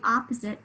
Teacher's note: Yep, the second syllable, right, has the schwa spelled with an O.